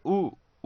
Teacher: ओठ की आकृति गोलाकार हो जा रही है। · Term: वृत्ताकार स्वर